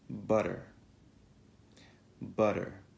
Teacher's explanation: La T contenuta nel mezzo di una parola va pronunciata come una D veloce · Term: T-voiced